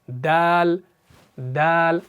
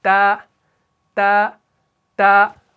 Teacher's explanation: دال کو پڑھتے وقت آپ کے ووکل کارڈز میں ایک وائبریشن پیدا ہو جائے گی